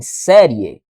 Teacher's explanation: Da mesma forma de tongo crescente, porque eu começo no I e subo para o e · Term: ditongo crescente